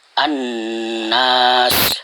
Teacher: Apabila ada salah satu huruf syamsiyah sesudah alif dan lam, maka itu disebut idgham syamsiyah, yaitu dimasukkan ke dalam nun tanpa dibaca lamnya. Jadi tasdid huruf pertama sesudah alif dan lam.